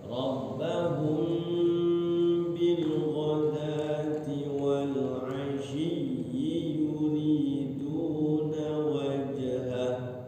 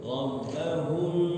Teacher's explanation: Rabbahumnya ditahan ya, ketemu ba ya. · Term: ikhfa syafawi